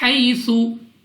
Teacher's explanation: یا مدہ اور یا لین میں کیا فرق ہے کہ یا مدہ کو آپ 2 سیکنڈ تک کھینچ کر پڑھیں گے اور یا لین کو آپ نے بغیر کھینچے بغیر جھٹکا دیے پڑھنا ہے, یعنی جلدی سے